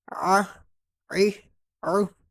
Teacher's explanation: عین اور حا حلق کے درمیان سے